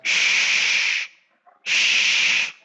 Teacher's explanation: Artinya menyebar atau meluas, yaitu menyebarnya suara angin huruf shin dari makhrajnya di dalam mulut sehingga terdengar shh, shh. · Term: at-tafashi